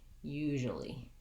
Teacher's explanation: We'll say it more like usually. So my jewel becomes more of a jol without that tense oo. It goes right into the schwa, jol, usually.